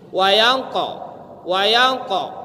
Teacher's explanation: Kenapa kedengaran dia itu tebal? Karena kolkolahnya itu, bukan karena dia itu di tenggorokan.